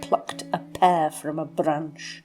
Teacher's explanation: there's this plosive alliteration, the P's and the B sounds of the plosives